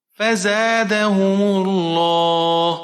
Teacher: زا کو ہم سختی کے ساتھ پڑھیں گے، سیٹی والا حرف ہے